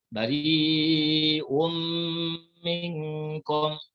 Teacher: Maka namanya idgham ma'al gunnah, kita masukkan tanwin ke dalam mim serta didengungkan.